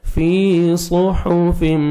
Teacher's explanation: یا مدہ 1 سیکنڈ فا کو کھینچنا ہے، صاد کو موٹا کر کے پڑھنا ہے، فی صحف، ہا کو اپنے مخرج سے ادا کرنا ہے، صحو، صحف، ہا نہیں پڑھنا، صحف.